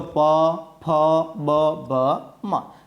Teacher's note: જે વર્ણોનું ઉચ્ચારણ કરવા માટે હોઠોનો ઉપયોગ થાય તેને આપણે ઓષ્ઠ વર્ણો કહીએ છીએ